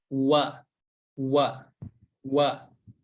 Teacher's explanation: Huruf wa memonyongkan bibir, kemudian menariknya wa.